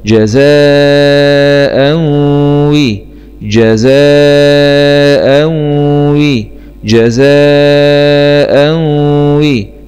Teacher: همزة فتحتين مع الإدغام بغنة في الواو المكسورة لأن الواو من حروف كلمة ينمو.